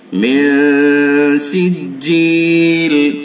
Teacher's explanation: نون ساکن ہے، نون ساکن کے بعد سین ہے، اخفا کے 15 حرفوں میں سے، تو اس کے اندر اخفا ہوگا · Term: اخفا حقیقی